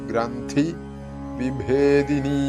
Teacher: ഭ ഘോഷ ശബ്ദമാണ് അല്ലെങ്കിൽ മഹാപ്രാണൻ അതുകൊണ്ട് അത് അങ്ങനെ തന്നെ ഉച്ചരിക്കേണ്ടതാണ് വിഭേദിനീ എന്ന് നീട്ടേണ്ടതാണ് അങ്ങനെ ഈ മന്ത്രത്തിന്റെ ഒരു സ്ഥൂലാർത്ഥം ഷടാധാര ചക്രങ്ങളെ കുറിച്ചിട്ട്